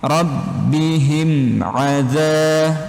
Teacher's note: mim sukun bertemu dengan huruf ain. Nah, ini hukumnya idhar syafawi, jelas di bibir. Tinggal teman-teman dipendekkan, selesaikan huruf him, langsung masuk ke huruf ainnya.